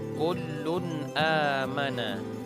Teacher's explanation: maka harus dibaca secara jelas dan terang artinya tidak dibaca secara dengung tidak mula dibuatnya secara samar dan tidak pula dibaca secara memantul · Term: Izhar